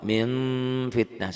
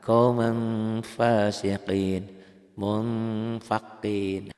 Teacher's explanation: Nah, kemudian ada juga bila nun mati atau tanwin bertemu dengan fa, bunyinya berubah menjadi M. Akan tetapi mulut tidak tutup rapat. Masih ada udara yang keluar ketika membaca. · kalau nun mati atau tanwin ketemu fa, ada seperti bunyi M, tapi bibir nggak nutup.